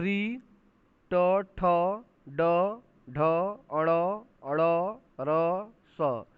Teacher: ये बोला जाता है मूर्धा और जीव से, तो इसको कहेंगे मूर्धन्य। जो मूर्धा और जीव से बोले जाए उसको कहेंगे मूर्धन्य।